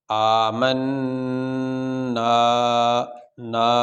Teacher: الف ساکن سے پہلے زبر آ جائے اس کی مثال یہ ہے، یہ الف ساکن ہے اور اس سے پہلے یہ زبر آ گئی، تو یہ حروف مدہ میں سے، اس لیے اس کو ہم لمبا کر رہے ہیں۔